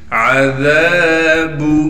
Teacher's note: عذاب ذال کو نرم کر کے پڑھیں گے، دونوں دانتوں کے درمیان ہلکی سی زبان لا کر ذال کو ادا کریں گے۔ ذال کے بعد الف مدہ ہونے کی وجہ سے ذال کو ایک الف کی مقدار کھینچیں گے۔